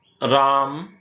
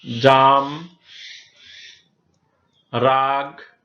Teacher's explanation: বাংলা উচ্চারণের ধারা অনুসারে এক অক্ষর বিশিষ্ট শব্দের আ এর উচ্চারণ কিছুটা দীর্ঘ রূপে উচ্চারিত হয়ে থাকে। যেমন রাম, এখানে দীর্ঘ উচ্চারণ হয়েছে।